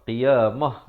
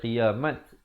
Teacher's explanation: ta simpul ditukarkan kepada bunyi ha, qiyamah. Jangan pula baca qiyamat. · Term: ta marbutah